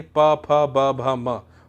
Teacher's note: होठ पे टच हुई इसलिए इसे ओष्ठ व्यंजन या होठ व्यंजन या ओठ व्यंजन कहते हैं।